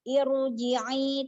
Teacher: kita harus angkat pangkal lidah kita ke langit-langit atas biar tebal keluarnya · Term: ro-nya tebal